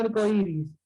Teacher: se unen dos palabras, pero se lleva la mayor fuerza de voz en la segunda